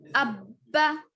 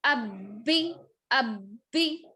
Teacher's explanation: ये जो तजदीद है इसको 2 मरतबा पढ़ते हैं, एक मरतबा पिछले वाले हर्फ से मिलाकर, एक मरतबा खुद उस, एक मरतबा सामने वाले हर्फ से मिलाकर, फिर एक मरतबा खुद उस।